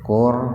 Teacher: ro-nya dibaca tebal karena huruf ro mati didahului doma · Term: tafhim